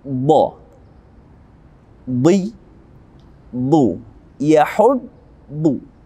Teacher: ujung lidah kita berada pada gigi geraham atas bagian depan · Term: huruf dha